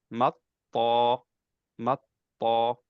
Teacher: সিদ্ধা থাকবে কিন্তু কলকলা নাই জাহার থাকবে শুধু কলকলাটা বাদ গেছে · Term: কলকলা বাদ দিয়ে